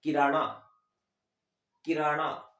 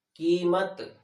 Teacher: पहली वाली में कम समय लगा है और जबकि दूसरी वाली मात्रा में दुगना समय लगा है। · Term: दीर्घ